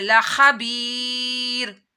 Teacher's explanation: یا ساکن سے پہلے زیر آ رہی ہے تو یا مدہ کرنا ہے.